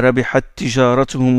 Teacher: deux T qui se rencontrent et on fait l'élision. L'idgham, mais aussi l'idgham entre deux lettres qui ont une même zone d'articulation.